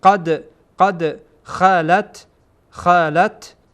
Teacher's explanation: چون این دال در اینجا ساکن هست و از حروف قلقله حساب میشه، قلقله میشه یعنی تکان میدین